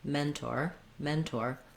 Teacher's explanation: we say a true T in mentor, even though often in the middle of a word, if the second syllable isn't stressed, we would say more of a flap or a D sound · So trying that, mentor, then smoothing it out, mentor, mentor, long on the men and short on the tor